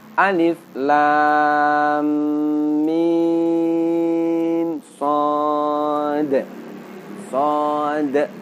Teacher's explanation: ketika kita mengucapkan shad, di situ di ujungnya terdapat bunyi huruf dal, maka huruf dal juga harus ditampakkan sifatnya, yakni qalqalah.